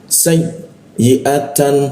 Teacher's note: Hamzah di tenggorokan bagian bawah dia. Jangan di lidah, jangan di depan ya, tapi di tenggorokan bagian bawah.